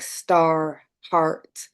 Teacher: It can be confusing because I'm from England and I don't actually pronounce that R as a consonant. I pronounce it as a vowel. And that is very typical of the English in England. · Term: non-rhotic